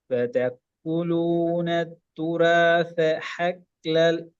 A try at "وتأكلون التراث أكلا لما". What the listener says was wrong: حكل இல்ல பிரதர்